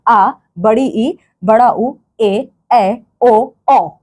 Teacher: दीर्घ स्वर वो स्वर होते हैं जिनके जिनके उच्चारण में 2 गुना समय लगता है ह्रस्व स्वरों की तुलना में